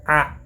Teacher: Quand tu dis A, il y a un blocus au milieu de la gorge.